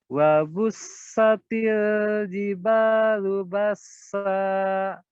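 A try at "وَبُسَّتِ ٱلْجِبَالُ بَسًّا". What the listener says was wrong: Tilnya jangan ditahan. Wabussatil jibalu bassa.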